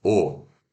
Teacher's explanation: a língua é a parte de trás, back, a abertura, close mid, e os meus lábios, ó, a letra O, ela tá para fora do gráfico, então ela ainda tá, né, redondinha, né? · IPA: /o/